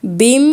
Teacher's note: दो मीम है और दोनों ही मीम मुशदि है तो यहां पे डबल गुना करना है